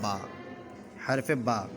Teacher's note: با دونوں ہونٹوں کے تر حصے سے ادا ہوتا ہے